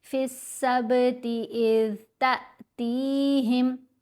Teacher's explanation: تا کو ہم نے حمزہ ساکن سے ملانا ہے، جھٹکا دے کر پڑھنا ہے